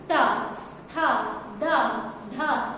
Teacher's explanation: तो ऐसा लगता है कि वो ऐसे कर रही है, टा फिर ठा, है ना। मतलब आपकी जो जीभ है वो स्पर्श कर रही है किसका, मूर्धा का। मूर्धा का स्पर्श नहीं करेगी तो वो आपकी आवाज नहीं आ सकती, है ना। · आपकी जो जीभ है वो पलट पलट के मार रही है एक तरीके से